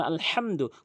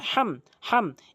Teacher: মিমকে স্পষ্ট করে বলতে হবে গুন্না করা যাবে না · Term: মিম সাকিন